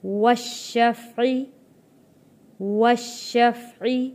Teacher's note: شین کے اوپر تشدید ہے، سختی کے ساتھ رک کر ہم نے یہاں پہ شین ادا کرنا ہے